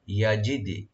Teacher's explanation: ইয়া open রাখবেন আর ডালে একটু ইকু হবে, কলকলা হবে